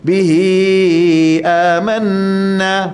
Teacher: Sebab dia tak sambung dengan hamzah. Kalau sambung dengan hamzah, dia panjang. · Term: mad silah